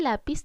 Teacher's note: si estoy cargando la voz en la sílaba la, que corresponde a la penúltima sílaba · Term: palabra grave